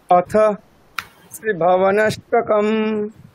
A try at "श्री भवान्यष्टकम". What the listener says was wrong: আচ্ছা আগে প্রথম নামটা ঠিক করে উচ্চারণ করুন, স্তোত্রের নামটা। দেখুন দীর্ঘ দীর্ঘ করতে হবে, ঠিক আছে? ভাও বা বা দীর্ঘ আছে তাহলে। শ্রী ভবান্যষ্টকম।